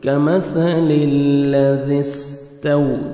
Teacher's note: کمثل الذی استو، تا کو باریک پڑھیں گے، آگے واو لین ہے، واو پہ لپس کو راؤنڈ میں لے کے جائیں گے